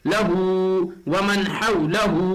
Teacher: لہو، ومن حولہ، ہا کے اوپر الٹا پیش آیا ہوا ہے، اس لیے مد صلہ ہوگا، مد صلہ کو ایک الف کے برابر کھینچ کر پڑھیں گے